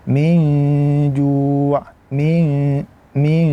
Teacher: Jadi min ju min min min jangan min tidak memasukkan suara ke dalam hidung. Jadi ada suara di dalam hidung ataupun itu yang kita namakan dengan ghunah maka masukkanlah ee suara kita itu ke dalam hidung.